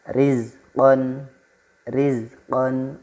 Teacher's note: Ra yang dibaca tipis pangkal lidahnya tidak terangkat. Nah, ra tarqiq ini artinya adalah tipis, kemudian melafalkannya dengan cara sedikit senyum atau meringis.